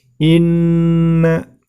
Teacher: di situ terdapat Nun tasydid maka sama hukumnya dengan Meme tasjid yaitu gunnah cara membacanya ditahan dan diperpanjang